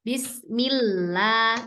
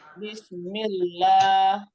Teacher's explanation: Lamnya yang nempel tepinya aja Ibu. Tepinya nih. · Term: tipis